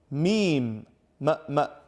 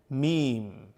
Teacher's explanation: no it is a letter of the lips for example me both lips are touching each other